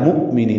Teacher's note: یہ حمزہ ساکن جھٹکے سے پڑھا جائے گا · نی یا مدہ ہے 2 حرکات لمبا کرنا ہے